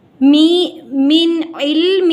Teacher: نون ساکن کے بعد عین آ گیا، یہاں پر اظہار ہوگا یعنی کہ گنہ نہیں ہوگا